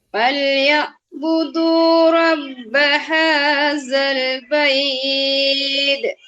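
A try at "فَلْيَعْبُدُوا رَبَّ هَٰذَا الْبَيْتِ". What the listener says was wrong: Dia bukan baidek. Dia bait. Dia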